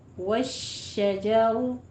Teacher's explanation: शीन और जीम का मखरज एक ही है, लेकिन शीन जो है वो फैली हुई आवाज़ आएगी, ठीक है, और जीम ऊपर पूरा तालु के साथ।